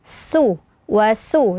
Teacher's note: wasuk apalagi setelahnya ada huruf qf sukun yang mana tebal ya Jadi hati-hati sinnya tetap tipis